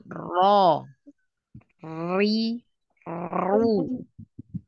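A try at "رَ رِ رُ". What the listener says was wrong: kurangi takrir. Takrirnya banyak. Ro. Nah, itu banyak. Jadi sekali. Ya, sekali aja getarannya. Ro. Ro. Nah, ro. Ri. Ru. Nah, sekali getarannya.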